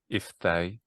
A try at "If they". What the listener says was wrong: maybe a bit higher for the start of the A.